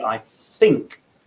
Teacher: You can see they're putting their bottom lip where their tongue should be.